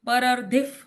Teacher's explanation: जब पूरी लाइन एक साथ गाते हैं ना, परर्धिफ होता है वो विसर्ग का उच्चारण आधे फ के जैसे होता है, क्योंकि विसर्ग के बाद प अक्षर आया इसलिए